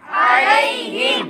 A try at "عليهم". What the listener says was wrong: अलैहिम। यहाँ आइन लिखा हुआ है तो यहाँ भी आइन की आवाज़ निकालनी है, ना कि हमज़ा या अलिफ की।